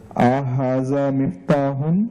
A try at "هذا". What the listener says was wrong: It is not ahada. Ahada. You should make it short. Ahada.